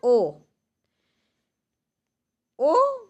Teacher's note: ओ मूल दीर्घ स्वर नहीं है यह संयुक्त दीर्घ स्वर है